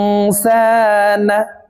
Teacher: নুন সাকিনের পর ইকফার হরফ সিন আসছে, এই কারণে এই নুন সাকিনকে নাকের ভিতরে লুকাইয়া গুন্নার সহিত পড়ব। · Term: ইকফা গুন্না